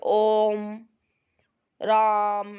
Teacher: इनको बोलने में 3 गुना समय लगता है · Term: प्लुत स्वर